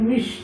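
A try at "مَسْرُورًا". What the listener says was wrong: মাস, মিস না, মাস।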